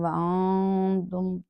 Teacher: ان دو حروف کے بعد کوئی بھی حرف آ جائے گا پھر تو وہاں ظاہر کر کے میم ساکن کو پڑھا جائے گا، لیکن اس پہ ہم جلدی سے اپنے ہونٹ نہیں کھولیں گے تاکہ ساکن ہل نہ جائے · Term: اظہار شفوی